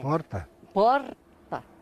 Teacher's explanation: Aqui vivem descendentes de italianos e por aqui o R fica bem mais fraco.